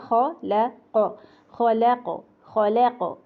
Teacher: ख मोटा, लाम बारी, क़ाफ का कलकला मोटा, खल।